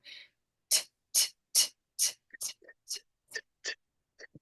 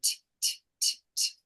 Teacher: You can feel the air. It's gentle. There's no vibration here.